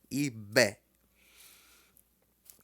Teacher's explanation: b deixa ele estourar bem alto